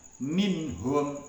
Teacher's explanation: Bunyi suaranya tetap jelas tidak samar dan juga tidak mendengung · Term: izhar halqi